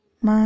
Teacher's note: Ma itu ibu, artinya tinggi dan rata